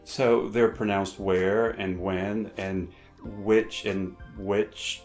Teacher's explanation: hardly anyone pronounces the H sound in words such as where, when, or which.